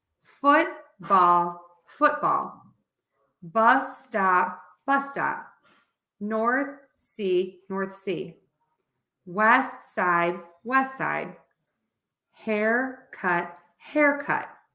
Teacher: louder longer higher for word number one